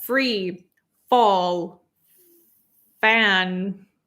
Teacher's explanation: And then for free, again, it's teeth on top of your lower lip, right? It's not t, it's not th, it's f.